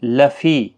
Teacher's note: فی یا مدہ ہے، ایک الف کی مقدار کے برابر کھینچیں